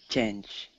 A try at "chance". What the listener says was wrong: It's a little bit different. It has the soft sound, so it's chance, not change.